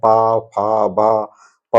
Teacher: आपका प वर्ग के समस्त वर्ण ओष्ठ से बोले जाएंगे।